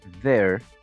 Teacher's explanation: pronunciamos la th con una d pero con más aire saliendo entre nuestros dientes y la lengua ver sale un poquito de aire entonces eso se forma el